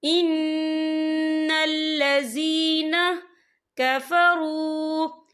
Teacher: नून मुशद्दद है, यहाँ पर गुन्ना होगा · या साकिन है, या साकिन से पहले ज़ेर है, तो हम इसे 2 या 3 हरकत के बराबर खींच के पढ़ेंगे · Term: या मदा